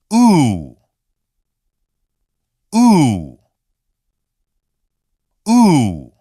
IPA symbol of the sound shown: u